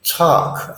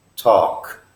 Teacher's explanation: that L is almost silent you're not really using your tongue to make the L